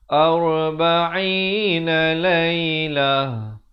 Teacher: ain makhrajnya di pertengahan kerongkong